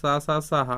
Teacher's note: इन्हें हम महाप्राण में गिनती करते हैं, तीनों सकार और हा